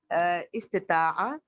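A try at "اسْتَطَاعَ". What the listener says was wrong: इस्तिताअ, इस्तिताअ नहीं, ता, सॉरी जेर नहीं है, इसमें जबर है। इस्तिताअ, इस्तिताउ।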